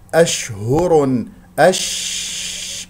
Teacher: شين ماذا ساكنه فيها تفشي فيها يجري الصوت ويجري النفس